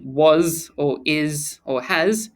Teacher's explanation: a final s sound sounds like z